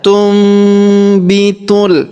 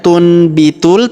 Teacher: maka nun sukunnya melebur masuk ke huruf B dan nun sukun berubah menjadi huruf mim. Kita baca tumbitul, bukan tunbitul tapi tumbitul.